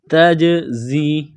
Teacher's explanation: زا میں سیٹی کی آواز پیدا کریں گے · جیم ساکن ہے تو یہاں پر قلقلہ کریں گے ، تجزی کس طرح پڑھیں گے، تجزی، زا میں سیٹی کی